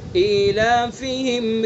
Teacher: إيلافهم یعنی حمزہ کے نیچے جو کھڑا زیر ہے، کھڑا زیر یا مدہ کے قائم مقام ہوتا ہے، تو یہاں پر بھی مد اصلی ہوگا اور ایک الف کے برابر کھینچیں گے. إيلافهم اگر خالی ایک زیر پڑھا تو یہ غلطی بڑی غلطی ہو جائے گی، تو اس لیے اس کا بھی دھیان رکھنا ہے.